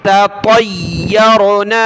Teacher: बारीक ता है नुक्ते वाली, पतला पढ़ना है उसको